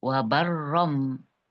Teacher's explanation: Tanwin, nun sukun atau tanwin ketemu dengan huruf ba itu hukumnya adalah iklab. Artinya merubah bunyi nun sukun menjadi mim sukun dari baron menjadi barom.